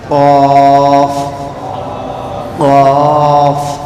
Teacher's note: زبان کی جڑ کو اندر جو زبان کا جڑ ہے نا آخر میں جہاں پر اینڈ ہوتا اس کو اوپر تالو کے حصے پہ لگانے سے نکلتا ہے · زبان کے اندر کا حصہ لگانے سے قاف نکلتا ہے